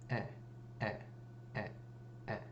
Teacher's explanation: They all make the sound eh. Notice we do not hear the N or the M when we're saying these.